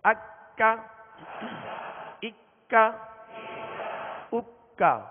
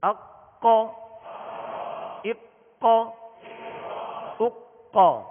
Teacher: یہ ڈنڈی والا کاف ہے لہذا اس کو باریک پڑھنا ہے، اور دو نقطے والے قاف کو پر یعنی موٹا پڑھنا ہے